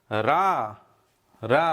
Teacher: रा लपेट कर जबान ऊपर से गिरती है तो लुंठित